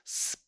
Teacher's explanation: 스프 할 때 공기가 진동을 나타내지 않고 쭉 나가니까 진동이 안 되죠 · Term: 무성음